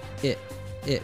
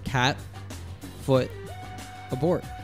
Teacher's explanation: the T at the end of it is pronounced as a glottal T, cut off at the back of the throat